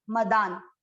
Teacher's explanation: ये न जो आधा है ये दा के साथ पढ़ा जा रहा है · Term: आधा न